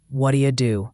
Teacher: t in what becomes a d sound and do you becomes da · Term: reduction